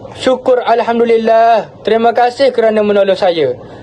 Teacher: Nada suara pada perkataan syukur alhamdulillah lebih tinggi dan diikuti dengan hentian suara sebelum terima kasih untuk memisahkan ungkapan syukur kepada Tuhan dengan ucapan terima kasih kepada orang lain. Intonasi meningkat pada alhamdulillah, menekankan rasa syukur yang mendalam.